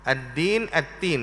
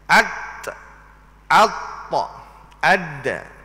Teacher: Makhraj huruf bagi huruf ta, ta dan dal adalah sama. Daripada hujung lidah, hujung lidah itu tunja ke akar gigi kapok. Di situlah tubiknya keluarnya makhraj 3 huruf ini.